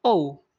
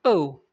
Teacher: Kalau dia suara ow itu kombinasi O dan U, ow. Sementara kalau dia eu dari suara e dan u, eu.